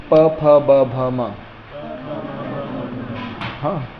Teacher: फिर आता है ओष्ठ्य, यानी प, फ, ब, भ, म। हाँ, अभी जिह्वा कहीं भी पिक्चर में नहीं है, सिर्फ होंठ हैं